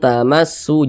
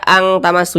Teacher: Kita baca tamassu, jangan dibaca ang tamassu, jangan, tapi dibaca an-nya itu kita tahan, kita panjangkan sejenak karena dia didengungkan. Tamassu, nah, seperti itu. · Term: ikhfa hakiki aqrab